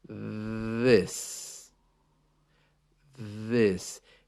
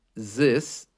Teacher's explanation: the same but it's similar it's it has this sound that you put your tongue just out past your teeth and let the air vibrate through it this this it sounds a little bit like Z this but